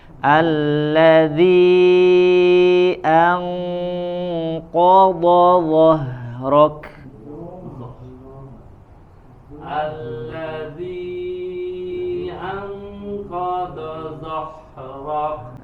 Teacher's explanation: Tebal, sempurnakan qafnya, ko, do dan dho. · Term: huruf tebal